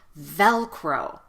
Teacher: use it more often but let's practice the pronunciation of Velcro the first syllable is the strong syllable so stress that syllable a lot · at the end of the word because of the vowel o anytime you say the vowel o in American English at least it ends with a lot of lip rounding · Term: W Shadow